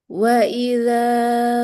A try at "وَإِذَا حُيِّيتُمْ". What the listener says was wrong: dua harkat aja, jangan kepanjangan. idza udah lebih dia.